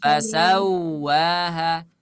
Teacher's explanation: Waw bertasydid ini tanpa gunnah suaranya.